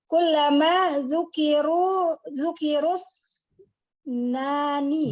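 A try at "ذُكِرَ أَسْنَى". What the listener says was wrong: Jangan disambung. Zukiru asna.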